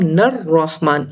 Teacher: اب لام خاموش ہے، اگر ہم اس کو پڑھیں گے انڈیویجول تو اس حمزہ وصل کو حرکت دے کے الرحمن پڑھیں گے، لیکن اگر ہم اسے پچھلے حرف سے ملا کے پڑھیں گے تو ہم نر رحمان، اب الف لام دونوں گر جائیں گے